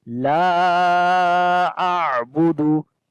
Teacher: لا کو لمبا کریں گے، الف مدہ ہے، الف سے پہلے زبر آ گیا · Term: مد منفصل